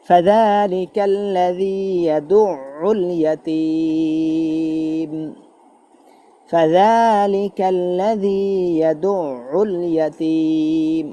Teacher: আইন উচ্চারণ চাপ দিতে হবে, ইয়াদুউল দুইবারে আইন উচ্চারণ হবে